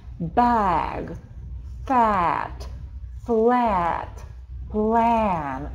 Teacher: Это как будто бы звук A, переходящий в звук E. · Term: бабочкой